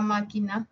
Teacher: La M es una nasal, la K es una oclusiva y la N también es nasal.